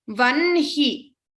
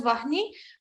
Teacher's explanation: So lot of people tend to put say ha before na, but for this class we'll be pronouncing it as vanhi, though it is written as vahni. Many chant it as vahni, but for this class we will be chanting vanhi as my gurus have taught me in that manner.